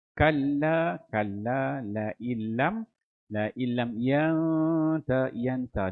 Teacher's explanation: nun mati bertemu ta tu hukum ikhfa, dengung tu sempurnakan 2 harakat.